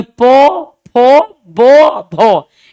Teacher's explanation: और ओष्ठ में क्या है कि एक वर्ण यानी एक होंठ ऊपर नीचे हर बार एक दूसरे से टकराएगा।